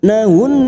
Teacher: nun yang bertasdid gunnah musaddadah 3 harokat kita dengungkan